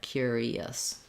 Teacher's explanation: I don't have to put it in intentionally, but when I'm moving from E to the we just naturally have vowel to vowel linking, and we use kind of a y sound there